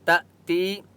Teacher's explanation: یہ حمزہ کے اوپر سکون ہے اس لیے تا کو جھٹکا دیں گے، ٹھیک ہے، اس کو لمبا نہیں کریں گے۔